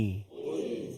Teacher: lam mati Tu dalam keadaan nipis tak boleh ghul tak boleh ghul tapi kita baca ghul Cuba